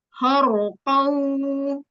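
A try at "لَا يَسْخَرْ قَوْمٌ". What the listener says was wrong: Jangan ditutup. Khor. Biarkan dia terbuka di roknya. Khorqo. Khorqo. Khorqo. Jadi jangan ditutup gini. Khorqo. Khor. Khor.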